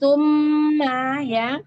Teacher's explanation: summa mim tasdidnya gunnah musyaddadah ya, ditahan dengungnya 3 harokat di rongga hidung merupakan tingkat gunnah pertama, gunnah akmal.